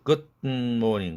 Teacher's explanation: 울림도 동화를 시켜서 우리는 닉네임, good morning도 good morning 이러는데 사실상 원어민들은 good morning 드 사운드가 뒤에 비음 때문에 코로 개방되는 드 사운드가 됐죠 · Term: nasally released